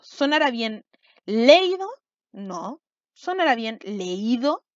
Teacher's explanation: tengo una vocal abierta con una vocal cerrada tónica que están juntas y se formó un hiato